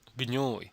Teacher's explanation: the voiced velar plosive stop g and the palatal nasal nj are being combined